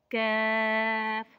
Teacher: कफ जुबान की जड़ और तालू के सख्त हिस्से से लगे तो कफ अदा होता है